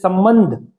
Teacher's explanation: तो अयोगवाह एक होगा अम, जिसे अनुस्वार कहा जाता है और इसका उच्चारण म की तरह किया जाता है।